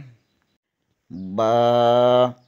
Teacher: با بند ہونٹوں کے گیلے حصے سے ادا ہوتا ہے